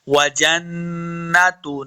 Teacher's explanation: नून मुशद्दद है, जिम को नून के साथ मिलाना है और गुन्ना करेंगे